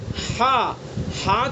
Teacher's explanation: हलक के बीच में आवाज ठहरती हुई महसूस हो रही है